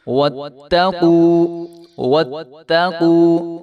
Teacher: وَاتَّقُوا، وَاتَّقُوا، تو اس کو جو ہے وَاتَّقُوا نہیں کر دیں گے، تو یہاں پہ ہم نے اس کو لمبا بالکل بھی نہیں ہونے دینا، کیونکہ تا کے اوپر شد ہے اور اس کے اوپر زبر ہے، تو اس کو تھوڑا سا سختی کے ساتھ ضرور پڑھیں گے